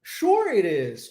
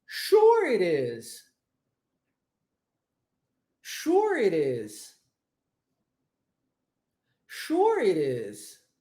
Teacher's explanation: o t sendo transformado em R